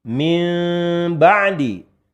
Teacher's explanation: Kemudian yang kedua, infiraj. Infiraj ini tidak menempelkan. Jadi, tidak menempelkan 2 buah bibir.